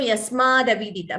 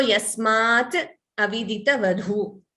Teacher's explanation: if you combine the sandhi, t doesn't remain, d comes instead of t.